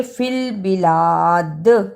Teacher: دال پر قلقلہ بھی کرنا ہے